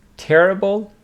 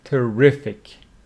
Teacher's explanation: Terrible with the stress on the first syllable. Terrible, which means very bad, and opposite of that, terrific with the stress on the second syllable. Terrific means very good.